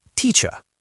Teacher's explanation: in most British accents, which are non-rhotic, meaning they don't pronounce the R, a word like teacher ends in a pure schwa, teacher. In American English, we add a little R color to it, so it's teacher. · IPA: /ə/